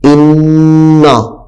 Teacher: یہاں پہ نون مشدد غنہ کر کے پڑھنا ہے